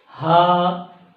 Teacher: ہا، ہا کا مخرج یہ ہے کہ حلق کے شروع حصے سے ادا ہوتے ہیں